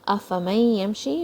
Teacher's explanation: meme is going to join with the ya. This is idgham, when two letters merge together, and the noon is going to disappear. There's no sound of noon in this.